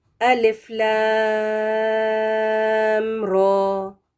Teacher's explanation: صرف لام کے ساتھ ہم 6 کاؤنٹس اس کو کھینچ کر پڑھیں گے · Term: مد